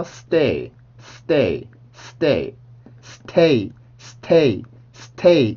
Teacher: 그래서 stay, stay, stay, stay, stay, stay 이러면 소리가 조금 끊기는 느낌이니까 자연스럽게 된소리로 바꿔서 발음을 해주면 훨씬 더 부드럽게 된소리 그 st 발음을 할 수가 있고요